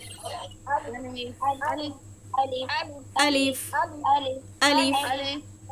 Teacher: আলিফ হরফটা টান ব্যতীত পড়িতে হয়। এটাতে কোন টান হবে না।